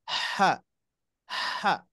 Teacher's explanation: setiap huruf mempunyai haknya seperti Huruf ha makhrajnya ditenggorokkan Tengah nah haknya harus diucapkan dengan sempurna ha ha itu itu hak